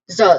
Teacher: So there is a buzzing sound here. Actually instead of hissing sound